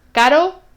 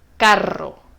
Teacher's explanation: la única diferencia entre el sonido suave y el sonido fuerte es cuántas veces toca el paladar con el sonido suave solo toca una vez y caro y